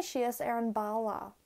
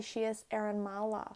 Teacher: notice how when i go from n to b it's a much harsher change than when i go from n to m